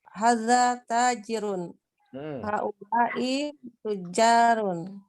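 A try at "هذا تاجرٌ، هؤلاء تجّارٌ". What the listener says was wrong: Naam, ahsanti.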